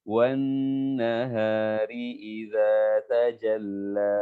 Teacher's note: Nun tasydid, gunnah musyaddadah, wajib gunnah, wajib didengungkan. Minimal 2 ketukan. Ya, minimal 2 ketukan kita tahan suara kita.